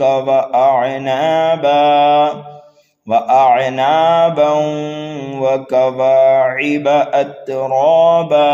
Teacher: ادغام کریں گے تنوین کے بعد یرملون میں سے واو آنے کی وجہ سے